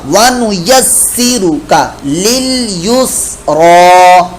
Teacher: یہاں پر لام ساکن کے اندر قلقلے والی کیفیت نہیں بنانی